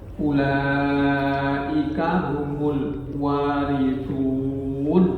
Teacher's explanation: alwaritun itu mad arid lisukun. Jadi sepanjang enam harakat lebih utamanya.